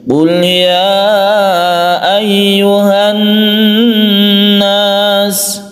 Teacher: Kita tahan membaca nun tersebut karena gunnah. Gunnah artinya berdengung.